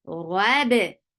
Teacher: Ba is light. Rabi, and ba will get qalqala.